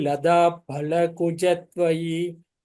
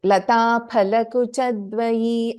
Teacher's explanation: I am hearing ka as g. I hope you're pronouncing it as ka only